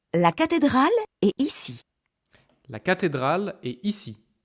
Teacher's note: Goes down at the end.